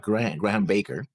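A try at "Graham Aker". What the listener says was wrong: Acre. Acre. No B. In his entire name, actually. There's no B in his entire name. It's Graham Acre.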